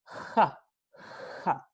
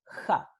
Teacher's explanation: este alófono es fricativo, sordo y es velar, ja. Es la pronunciación más extendida, la más común, ¿sí? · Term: fricativa sorda velar